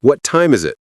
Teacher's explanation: What time is it? Voice goes down on it. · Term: WH questions fall